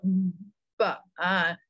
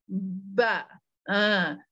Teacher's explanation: Dua bibir kita bertemu dan buka. Kalau tak buka dia tak bunyi apa-apa pun. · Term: huruf bibir